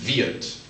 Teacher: even though it ends in a D, you pronounce it almost like a T